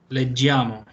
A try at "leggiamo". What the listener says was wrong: Sí, pero sin la I. Es leggiamo. Desaparece. Ahí sí desaparece la I en la pronunciación. Leggiamo.